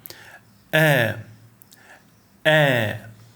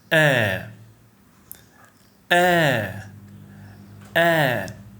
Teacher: The articulation point of Hamza is the glottis, deep in your throat, the deepest part in your throat. The vocal cords will briefly close completely, stopping air flow, then release. Regarding letter qualities, Hamza is considered voiced sound. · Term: glottal stop